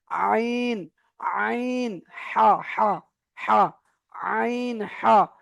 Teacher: হালাক বা কন্ঠনালীর মাঝখানে হতে উচ্চারিত হয় আইন হা এগুলো গলার একদম মাঝখান থেকে